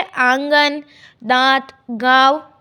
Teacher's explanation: ऐसे स्वरों का उच्चारण नाक और मुंह से होता है। जो अनुनासिक शब्द होते हैं उनका उच्चारण करते समय हम नाक और मुंह दोनों का उपयोग करते हैं और उच्चारण में लघुता रहती है, जैसे आंगन, दांत, गाँव आदि।